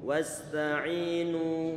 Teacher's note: Wawunya tipis, kemudian sinnya tipis, ta'nya tipis, ainnya tipis. Wasta'inu. Kita panjangkan ainnya.